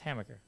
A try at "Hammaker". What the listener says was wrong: No, Hammaker. You're saying Macker, Hammaker.